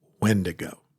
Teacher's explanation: Putting the emphasis on that first syllable.